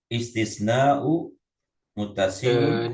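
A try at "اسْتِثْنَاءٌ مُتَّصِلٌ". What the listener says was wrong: Di tanwin aja istisnaun.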